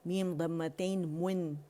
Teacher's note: میم کا مخرج جو ہے خشک سے دونوں ہونٹ کے شفتان ملائیں گے